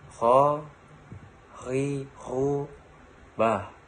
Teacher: Melafalkan huruf kho dikeluarkan dari tenggorokan yang terdekat dan ronggang mulut. Ciri khasnya terdengar seperti orang yang sedang mendengkur.